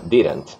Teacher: Você percebe que só tem uma vogal, ok? E essa vogal é curta, semi-neutra, e entre o D e o N tem uma vogal oral oculta neutra